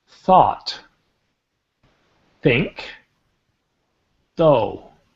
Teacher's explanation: So, we got that th sound with though, right? I stick my tongue between my teeth.